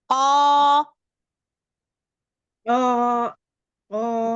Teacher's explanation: Makhrajnya. Pangkal lidah ketemu langit-langit lunak. Qa. Terlalu mundur.